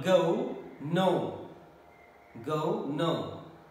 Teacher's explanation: This is again closing diphthong. O, back of the tongue, and in between half closed and half open, but it goes towards the half close, above half closed position. Again, it is also closing, OE. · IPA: /əʊ/